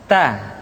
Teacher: Keluar dengan menyentuhkan ujung lidah kita dengan gusi-gusi gigi seri bagian atas. Ta. Kemudian huruf Ta ketika diucapkan terdengar ada nafas yang mengalir, atau dalam ilmu tajwid disebut dengan sifat al-hamas.